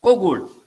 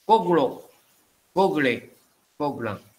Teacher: Second vowel is dropped.